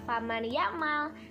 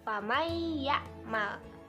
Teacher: Nah, cara bacanya adalah dimasukkan atau didengungkan. Kalian jangan baca faman ya'mal, tapi bacanya famay ya'mal. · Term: idgham bigunnah